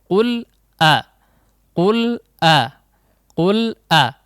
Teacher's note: hamzah betul-betul kuat juga ya, di antara huruf yang kuat atau memiliki sifat syiddah sehingga terdengar betul. Jangan qul a, bukan a ya, itu huruf mad. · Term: huruf hamzah